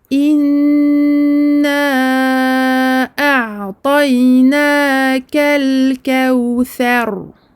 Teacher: Et comme c'est également une fatha, à ce moment-là, on dit qu'on l'emphatise. Emphatiser un ra, c'est-à-dire le gonfler, remonter le fond de la langue, le rendre gros et non pas aminci.